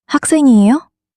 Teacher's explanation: When speaking, just raise your voice slightly at the end.